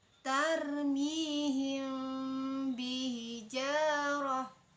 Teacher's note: Mimnya bertemu, mim sukun bertemu dengan ba, itu bacaannya disamarkan dan didengungkan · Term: ikhfa syafawi